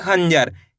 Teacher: अनुस्वार की मात्रा इसलिए बोलते हैं, इसका उच्चारण नाक से निकलता है।